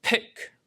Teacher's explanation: uses what we call P with long release. There's an extra puff of air